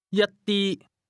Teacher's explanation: This word is pronounced with the same high, level tone